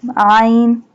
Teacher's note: Ain pronounced from the middle part of the throat